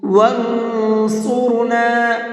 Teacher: اس نون کے اندر اخفا کر کے پڑھیں گے، اس لیے کہ نون ساکن کے بعد میں صاد ہے اور صاد اخفا کے حرفوں میں سے ہے۔